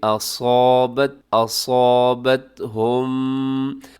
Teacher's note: اس میں صاد موٹا ہے، الف بھی ساتھ موٹا کیجیے گا